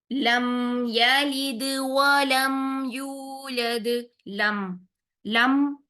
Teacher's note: दोनों होठ आपस में मिल रहे हैं नरमी से आपने मीम के लिए दोनों होठों को मिलाना है और फौरन से छोड़ना नहीं है